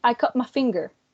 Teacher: and then the real phonetic transcription would be cat and then the phonetic transcription assimilated would be cup with a p sound at the end